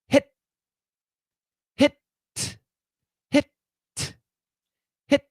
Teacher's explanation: we stop the tongue touches the alveolar ridge and boom you stop